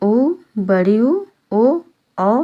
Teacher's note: वृत्त मुखी स्वर में जिनके होठ गोल हो जाते हैं उनमें ऊ, बड़ी ऊ, ओ, औ शामिल है।